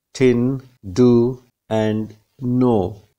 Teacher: the tip and blade may make a contact with the teeth ridge to produce the initial consonant sounds in the english words tin do and no the front of